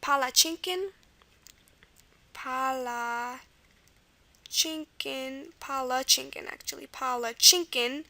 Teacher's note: and the second A here is the schwa